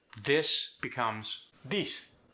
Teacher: Brazilian Portuguese doesn't have a TH. This becomes this. The TH gets replaced by the D.